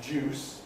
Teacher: There is an ongoing sound change, as we have mentioned, whereby d is becoming j. So that gives us another kind of juice, what would be deuce in more conservative pronunciation.